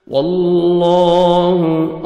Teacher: واللہ، اللہ سبحانہ وتعالیٰ کے نام سے پہلے زبر ہے، لام کو اپنے موٹا کرنا ہے، پر کرنا ہے اور 1 سیکنڈ کھینچنا ہے